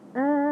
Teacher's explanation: kalimah tersebut dibaca secara ringan, tanpa idgham dan tanpa bertasydid. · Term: kalimi mukhaffaf